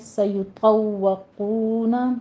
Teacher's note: طا اور قوف کو پر پڑھا جائے گا، واو کے پر تشدید ادا کیجیے اور قوف کے بعد واو مدہ آ رہی ہے، سیطوقون، ما